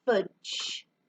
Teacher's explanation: The J sound is coming at the end of the word, but there's a short vowel. There's that bouncy sound, one of our vowels.